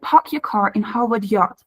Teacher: the long a is usually pronounced back and round in this accent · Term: New York City accent